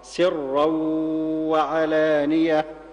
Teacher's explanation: يعني نسمع لبعض الناس يقول سرا وعلانية، هذا لا يصح على رواية حفص عن عاصم التي نقرأ بها. الصواب ترقيق السين وتفخيم الراء